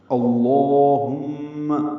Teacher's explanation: ہاں کو اقصی حلق سے ادا کرنا اور میم مشدد سے ملانا ہے. میم پہ غنہ ہوگا، آواز ناک کے بانس سے ملے جائیں گے، 2 حرکات تک ٹھہرائیں گے.